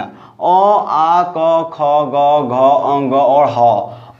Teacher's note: तो ये सभी वर्ण का उच्चारण स्थान क्या है, कंठ है।